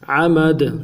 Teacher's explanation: دال عرف قلقلہ میں سے جب ساکن ہوگا تو قلقلہ کریں گے، تو قلقلہ بھی کریں گے، عمد۔